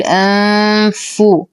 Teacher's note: أنفسكم لدينا نون ساكنة وبعدها حرف الفاء، الحكم إخفاء حقيقي مع غنة كاملة مرققة، نقترب كثيرا من مخرج الفاء فنقول أنفو مع إتمام ضمة الفاء.